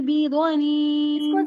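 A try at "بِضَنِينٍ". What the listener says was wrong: ज्यादा लंबा नहीं करें, ये हुआ करेंगे तो लंबा हो जाएगा। वमा हुआ अलल गैबि बिज़नीन।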